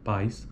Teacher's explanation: a proeminência está na vogal a e não na vogal e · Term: glide